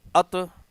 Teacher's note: جماؤ کا مقصد یہ ہوتا ہے کہ ات ہم نے روک دیا آواز کو، سانس نہیں ٹوٹی ہماری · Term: قلقلہ